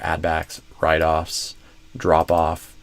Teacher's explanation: Not uh I shouldn't say just words, but you know, kind of multi-word chunks. So, like a two-word pair where the first word is stressed instead of the second